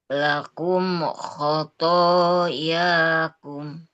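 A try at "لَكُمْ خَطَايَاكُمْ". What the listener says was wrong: Nah, di sini masih, Bu. Masih dibaca syiddah. Jadi ketika membacanya tidak apa tidak seperti ditahan. Kalau misalkan barusan kan lakum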